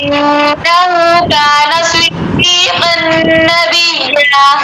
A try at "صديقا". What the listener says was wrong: صدیقاً کا پڑھیں آپ. قاف پڑھیے. صدیقاً پور باریک حروف کا دھیان رکھا کریں نا. صدیقاً پور کیجیے بیٹا. صدیقاً نبیّا.